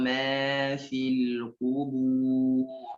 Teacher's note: tebal roknya berhadapan dengan sebelumnya dhammah